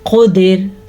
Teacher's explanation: موٹا قاف اور را کو باریک پڑھنا ہے